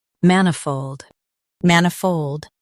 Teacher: Man i fold, manifold. Stress man and keep fold smooth.